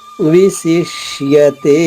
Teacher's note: ష ఈ షా పలికినప్పుడు నాలిక మడిచి వెనక్కి పెడతాం.